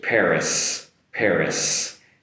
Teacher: Paris with an “s” sound at the end so be careful there not to finish with an “e”